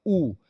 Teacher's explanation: उ बोलेंगे तब भी किनारे के ओठ जुड़े रहेंगे बीच का थोड़ा सा ओठ खुला होगा